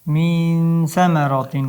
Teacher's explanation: Sa ikkita tishni o'rtasidan sa bo'lib chiqadi.